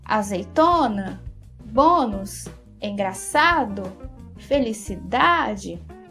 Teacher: percebe que a sílaba tônica é sempre a penúltima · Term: paroxítona